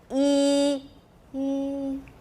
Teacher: we could have the same vowel quality, E, but we can make it louder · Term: different levels of loudness